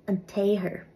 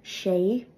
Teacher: the Slender R is often pronounced like almost like a y